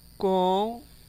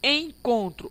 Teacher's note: Então o N apenas está servindo, ó, para nasalizar.